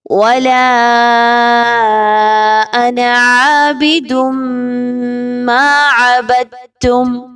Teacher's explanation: وَلَا 4 سے 5 الف کے برابر، اس کو لمبا کریں گے۔ انا، یہ ان حروف میں سے ہے کہ جہاں پر آپ نے یہاں پہ نون الف زبر نہ نہیں پڑھنا، بلکہ نون زبر نہ پڑھنا ہے، ٹھیک ہے۔